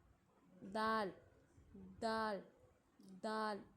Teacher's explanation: دال دال دال یعنی دانتوں کی جڑ پر نہیں بلکہ دانتوں سے تھوڑا سا اوپر